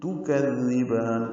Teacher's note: کذبان کاف کو نرمی سے پڑھیں گے، زال سے ملائیں گے، زال کو نرمی سے پڑھیں گے، زبان کی نوک سامنے کے دانتوں کا اندرونی کناروں سے لگائیں گے